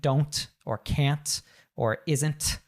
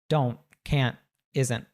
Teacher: we don't say that strong T in American English